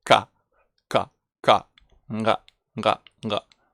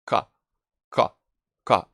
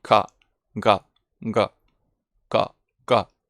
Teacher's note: So we make this sound with the back part of our tongue, almost in the throat, and that's how it's called velar.